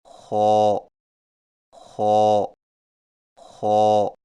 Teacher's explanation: خو کی ادائیگی میں زبان کی جڑ کو تالو کی طرف بلند کریں، یعنی خو، خو، خو۔ اور یاد رکھیں کہ خو کی ادائیگی میں خرخراہٹ کی آواز پیدا نہ ہو